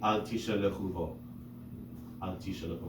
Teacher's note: like the Yemenite custom, they pronounce every shva, and some Sephardi communities do as well.